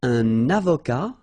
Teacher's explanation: Un avocat, so remember, liaison here and then final T not pronounced